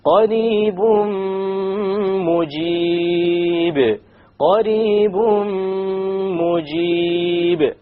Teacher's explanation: We drop the end sound and we merge the tanween immediately onto the meme with a ghunna. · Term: idgham with ghunna